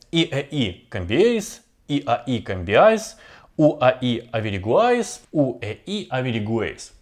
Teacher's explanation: Это сочетание трёх гласных подряд по типу слабый сильный слабый гласный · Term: трифтонги